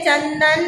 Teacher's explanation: जब किसी व्यंजन का उच्चारण मुख के साथ साथ मुंह से हम बोल रहे हैं चंदन, लेकिन नाक में भी इसका स्वर आ रहा है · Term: अनुस्वार